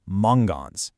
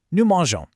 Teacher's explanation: a G right before an O makes a hard guttural sound, like mangons. But we want that beautiful soft G sound.